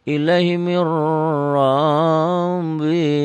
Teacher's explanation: Ini nun ketemu ro, tidak pakai dengung, nun ketemu ro. Ilaihi mir robnya double aja, mir rabbih, jangan lebay ya. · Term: idgham tanpa dengung